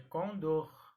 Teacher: na hora de pronunciar esta palavra, a sílaba mais forte será a última. Então, se pronuncia com dor e não condor. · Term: oxítona